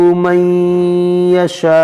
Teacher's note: یہاں پر نون ساکن کے بعد یا ہے تو یہاں پر ہم ادغام کریں گے